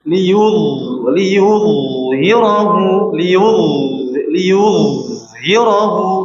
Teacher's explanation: huruf dha tebal, sempurna ketebalannya, kemudian sifatnya mengalir suaranya.